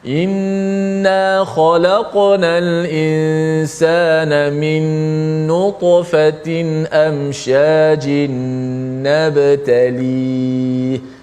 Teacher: Kalau qaf bunyi qaf macam mana, ta bunyi secara ta tebal dan tinggi, dan ba bunyi nipis. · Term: qalqalah